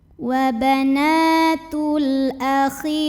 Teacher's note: Wa banatul, kemudian ada hukum alif lam qamariyah karena alif lamnya menghadapi huruf qamariyah yaitu hamzah, maka lam sukun kita bunyikan dengan izhar jelas